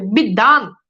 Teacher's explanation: বফালা মাঝখানে বসছে, এই যে দেখেন দয়ের উচ্চারণ দ্বিত্ব হচ্ছে